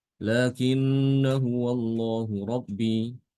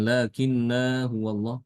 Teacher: kalau dia diwasalkan dengan kata setelahnya yaitu kata Hua ini alifnya tidak dibaca